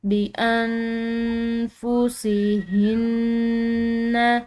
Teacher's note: تو اس نون ساکن پر ہم نے اخفا کرنا ہے، اس کو مخفی کر کے پڑھنا ہے۔